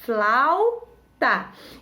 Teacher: encontro vocálico ele vai ficar junto na mesma sílaba